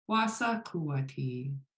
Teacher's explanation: Kuati in that form is long and low. So even though it's a question, it's important that kuati is low tone. And so the high tones are in was and sa.